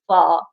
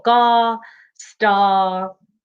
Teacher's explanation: some people call it the lazy r because you're not really doing anything you just open your mouth and you say ah